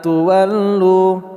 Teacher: Ma panjang dua harakat lu juga panjang dua harakat